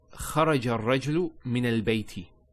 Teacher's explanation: Now I also want to mention, so here the sentence reads خرج الرجل من البيت, and you stop there. Now notice the last letter has a kasra. When we actually stop, we give it a sukoon. There's no sukoon that's written down, but we pronounce it as if there was a sukoon.